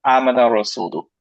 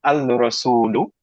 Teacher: সো actually হয়ে যায় আমানার রাসূল, রাইট? এই হামজাটা কমপ্লিটলি বাদ চলে যায়। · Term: হামজাতুল ওয়াসল